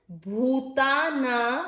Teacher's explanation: भू की मात्रा बड़ी इसलिए इसके उच्चारण में दीर्घ, हमको उच्चारण में ज्यादा समय देना है, भूताना। अब ना के ऊपर ये है अनुस्वार, शब्द के अंत में अनुस्वार है इसलिए इस अनुस्वार का उच्चारण होगा आधा म, म के नीचे हलंत, ठीक है।